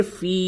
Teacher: یہ یا ساکن سے قبل زیر ہے، یہ یا مدہ ہے، اس کو تھوڑا سا کھینچیں گے